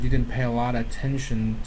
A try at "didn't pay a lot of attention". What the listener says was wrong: Didn't pay a lot of attention. He doesn't pronounce all the syllables. A lot of attention, but it's okay. It's actually not terrible if he doesn't do it too much.